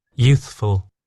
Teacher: So there's a slight gap there to give your tongue the time and the ability to go from the TH sound to the F.